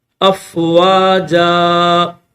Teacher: وقف کریں گے، 1 الف کی لمٹ میں اس کو کھینچیں گے۔